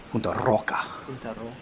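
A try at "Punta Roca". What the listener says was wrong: Mitch Salazar will be uh devastated with your pronunciations there. He's very particular about the rolling ars.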